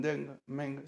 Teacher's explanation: Eng, como en Deng, Meng, se pronuncia como mucho más cerrada, una E mucho más cerrada y oscura, cercana a la O española y con un cierre gutural al final